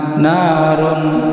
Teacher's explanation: Huruf ra, ini huruf ra berharakat dhammah, dhammatain, ini dibaca tebal tafkhim. Kemudian tanwin bertemu dengan ha, ini tanwin dhammatain bertemu dengan huruf salah satu huruf tenggorokan dari 6 huruf tenggorokan, ini adalah huruf ha.